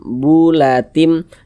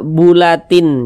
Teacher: Bunyi tanwin ini dimasukkan ke huruf mim. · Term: idgham bi gunnah